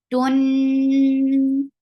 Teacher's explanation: Give a nice time keeping the sound in your nose. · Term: akmal gunna